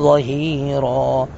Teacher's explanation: ظا کو پر کر کے پڑھیں گے لیکن نرمی کے ساتھ